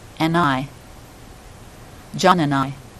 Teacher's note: We actually drop the D in this case and slide the N over.